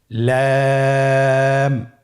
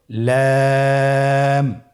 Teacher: লাম হরফটির মাখরাজ হলো জিহ্বার আগার কিনারা উপরের দাঁতের মাড়ির সঙ্গে লাগিয়ে উচ্চারিত হয়।